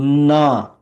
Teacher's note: ட ட ட ட ட ட ம் மூணு சுழி நா அப்ப ட வரிசையினுடைய மெல்லின எழுத்து நா கொஞ்சம் அழுத்தி சொல்லணும்